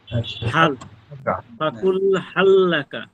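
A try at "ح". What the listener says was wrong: না, হা গলার মধ্যে চলে যাচ্ছে, হা সেই হানা হাই হদ্দিক যেটা ওই যেমন একটু আগে ছিল ওয়াহিদা ওইখানা হ্যাঁ ঠিক সরাসরি আমরা ছোটবেলায় খেলার ছলে বাচ্চাদেরকে ভয় দেখাতাম না, ভূত আসতেছে এমন একটা আওয়াজ করতাম যে গলার মধ্যখান থেকে ওই রকম একটা আওয়াজ বের করে।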